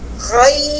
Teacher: ketika ada huruf tafkhim ketemu huruf ya layyinah, ya, huruf yang sebelumnya tidak boleh ditipiskan. Kita tidak boleh membunyikan khai, ayat khai, berikan haknya huruf kha karena dia tafkhim hak. · Kita tidak boleh membunyikan khai, ayat khai, berikan haknya huruf kha karena dia tafkhim hak. Khai, huruf ya layyinah 1,5 harokat. Angkat tengah lisan kita, ya, angkat tengah lisan kita.